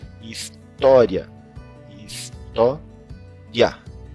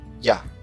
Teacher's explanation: Quando a gente vai abrir a boca para fazer o A, que é a vogal forte, a gente está abrindo, na abertura a gente faz o I rapidinho. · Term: semivogal